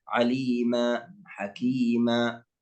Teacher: ثم القسم الثالث، المد الثالث، وهو مد العوض، وهذا يختص بتنوين الفتح، مثل عليما، حكيما. نقف على تنوين الفتح ونعوضه ألف بمقدار حركتين، يسمى مد عوض.